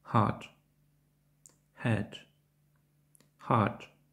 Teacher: В англійській мові він зустрічається тільки перед голосними, часто на початку слова. Він звучить як легкий, ледь чутний видих, на відміну від українського звуку «х». Цей звук утворюється без участі язика.